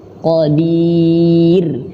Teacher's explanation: Di sini ada huruf ro dan ro-nya dalam keadaan tipis. Nah, di sini teman-teman, kebanyakan dari kita bacanya ro-nya tebal, harusnya tipis.